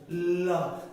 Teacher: দেখেন যখন আপনি বলবেন ল, লটা একটু বলেন তো, বলেন একটু স্লো মোশন বলেন, তাড়াহুড়ো করেন না। ল, দেখেন আপনার জিহ্বাটা সামনের দিকে একটা বেড়া করে রেখেছে, ল এখানে সামনে বাধা দিচ্ছে। এখন আমরা বলছি প্রতিটা বর্ণ বলার সময় একটা বাতাস বের হয়, কিন্তু ল বলতে গেলে জিহ্বাটা সামনে বাধা দিয়েছে, বেড়া করে দিয়েছে, তাহলে বাতাসটা বের হবে কেমনে? · ল বললে বাতাসটা বের হচ্ছে কোন দিক দিয়ে? দুই পাশ দিয়ে। পার্শ্বিক, পার্শ্বিক।